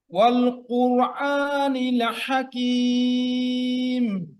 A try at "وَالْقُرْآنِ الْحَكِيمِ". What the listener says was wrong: যেমন ওয়াল, ওয়াল না কিন্তু ওয়াল, কি হবে? ওয়াওটা পাতলা, ওয়াল। কি হবে? ওয়াল কুরআনিল, এই লামটা কলকলা হয়ে গেছে, আরো আরো স্লো যান, আরো ধীরে ধীরে। ওয়াল কুরআনিল হাকিম। আচ্ছা, এটা এই যে রটাও কলকলা হয়ে যায়, কুরআন বলেন, কুরআন।